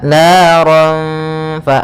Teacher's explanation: makhrajnya adalah gigi atas, gigi seri atas bertemu dengan bibir bawah. Maka fa ada aliran nafas. Fa memiliki sifat yaitu hamas. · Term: huruf fa